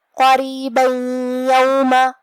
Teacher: تو ہم یہ تنوین کو یا میں ملا کے غنہ اور تشدید کے ساتھ یہ حکم کو ادا کریں گے